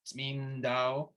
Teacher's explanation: Right with the first word, Tsmindao, a Georgian speaking this word might say it the way that you might be used to saying it, which is just kind of eliding the n to the d, Tsmindao. However, I prefer, and actually it's clearer, I think, when we're singing it also, to put that little Tsmindao, Tsmindao.